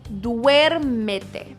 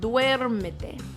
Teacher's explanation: That U and E next to each other kind of makes a W sound.